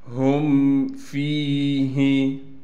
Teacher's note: میم کو بغیر غنہ کے پڑھنا ہے